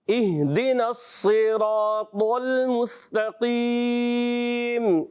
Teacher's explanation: مستقیم میں سین باریک اور قاف موٹا